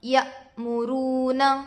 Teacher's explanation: واو ساکن سے پہلے پیش ہے، واو مدہ ہوگا، تھوڑا کھینچیں اور معروف پڑھیں